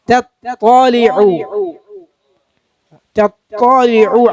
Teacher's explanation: ചുണ്ട് കൂർപ്പിക്കരുത്, തത്വ അല്ല. നാവിനെ പിൻഭാഗം മേലോട്ട് ഉയർത്തുക.